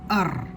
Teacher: രാ എന്ന് ഉച്ചരിക്കുമ്പോൾ രായുടെ കൂടെ ആ എന്ന ശബ്ദം കേൾക്കണം. അർ എന്ന് ഉച്ചരിക്കുമ്പോൾ ആ എന്ന ശബ്ദം അവിടെ കേൾക്കുന്നില്ല. അർ. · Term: ചില്ലക്ഷരം